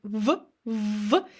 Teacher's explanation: In V, we just bite our lower lip a little and we get V, V, and we engage our chords.